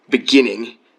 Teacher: if you take a word like beginning the stress is on gin in the the second syllable · the stress is on gin in the second syllable. So, like, it's kind of more pronounced.